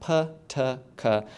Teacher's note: aspiration that people produce in uh um their stop consonant so sounds like PT and K in English have this kind of puff of air that comes out ptk has some air that comes out